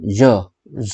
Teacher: ज जो है वो हमारा सघोष अल्प प्राण है।